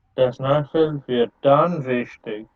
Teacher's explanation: remember to stress the dann wichtig.